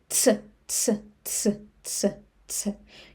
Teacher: you can try to say t and s tse very fast. Tse tse tse tse tse You will have something similar to Russian tse. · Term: letter tse